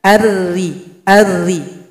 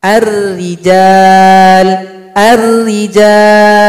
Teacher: Karena huruf ra tarkib, posisi bibir kita tidak mengikuti ke atas. Itu menunjukkan bahwa pangkal lidah tidak terangkat.